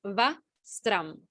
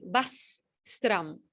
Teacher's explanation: you're landing on the sakara and then you take off on sakara.